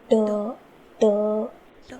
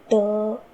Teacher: जब हम अपनी जीवा से ट इस वर्ण का जब उच्चारण करते हैं तब हमारी जीवा गोल घूमती है और मूर्धा को पूर्ण रूप से स्पर्श करती है, कुछ इस प्रकार ट।